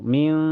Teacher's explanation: Cara bacanya nun sukunnya disamarkan ke sin dan ditahan sampai terasa ke hidung. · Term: ihfa hakiki